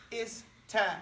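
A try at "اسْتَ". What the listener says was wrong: Don't say sta. Ista. Because in Arabic, we don't put two consonants next to each other and combine them like a diphthong.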